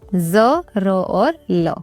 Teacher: फिर है वत्सर्य यानी दांतों के मूल से बोले जाते हैं